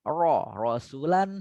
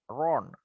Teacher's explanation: lidahnya itu keangkat dia, keangkat naik ke atas, kena langit-langit ya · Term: ro tafkhim